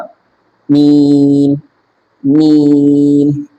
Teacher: মিম হবে দুই ঠোটের শুকন অংশ থেকে হালকা ভিতরের দিকে যাবে